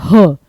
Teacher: ह जो है वो गले से बोला जाता है। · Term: कंठ ध्वनि